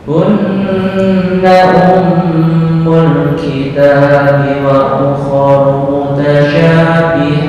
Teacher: Dengung. Ukuran mim. Ini ditahan 2 sampai 3 ketukan.